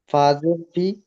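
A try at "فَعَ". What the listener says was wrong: ফাজের ফি নই ফা জবার ফা ফা আইন জবার ফা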